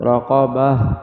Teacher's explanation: را زبر را، قاف زبر قا، رقا، با زبر با، رقابہ، تا دو زیر تین، رقابت، وقف رقابہ۔ گول تا وقف میں گول والی ہا بنے گی